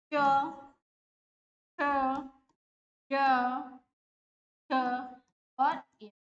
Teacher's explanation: ये हमारे तालू से उच्चारित होंगे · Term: तालव्य